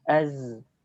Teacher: ketika sukun perhatikan az. Suara mengalir, tidak kita tahan. Sehingga tidak boleh kita baca az. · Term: rakhawah